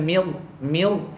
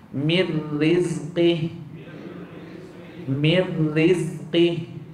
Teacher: ra berbaris kasrah mestilah dinipiskan